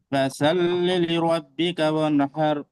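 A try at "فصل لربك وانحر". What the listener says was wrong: মাশাআল্লাহ, কিন্তু ভাই একটা জিনিস আমরা লক্ষ্য করবো ইনশাআল্লাহ, সোয়াদ আর সিন আলাদা ভাই, সোয়াদ সিন শিন ফা এগুলো আলাদা ভাই, তাহলে কি হবে এটা? এটা মোটা করে সোয়াদ, ফাসল, ফাসল, সালনা, ফাসল্লি লিরাব্বিকা ওয়ানহার।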